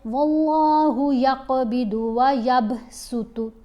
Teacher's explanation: یعنی موٹی آواز نہیں پڑھی جائے گی, سین کی شارپ آواز ہوتی ہے, تیز آواز ہوتی ہے, باریک آواز ہوتی ہے